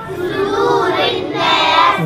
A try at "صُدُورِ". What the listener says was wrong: ضم الصاد، صدوري، صدوري،